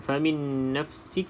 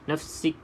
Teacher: Nafsik ada sedikit nafas terkeluar di situ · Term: hamas